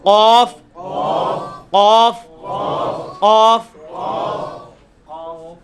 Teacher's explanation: ویسے تو یہ قاف جو ہے وہ آپ کی زبان کی جو تالو ہے نا پچھلی سائڈ والا, اس کو زبان کا جو اوپر والا حصے میں جو پچھلا حصہ ہے نا اس کو آپ اوپر تالو کے ساتھ ٹچ کریں گے, اسی حصے میں قاف نکل آئے گا